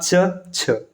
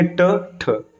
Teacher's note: गले से हवा तो निकलती है लेकिन जो स्वर यंत्र है ना उसमें कंपन नहीं होता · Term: अघोष व्यंजन